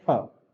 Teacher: अब फ जो है वो बिना होठों की मदद के नहीं बोलेंगे हम, जब तक होठों को आपस में टच नहीं करेंगे तब तक फ नहीं बोल पाएंगे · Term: ओष्ठ ध्वनि